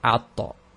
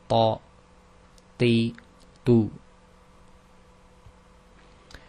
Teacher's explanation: So it's further back from the dal, so it's just slightly further back than where you pronounce the dal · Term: heavy version of the ta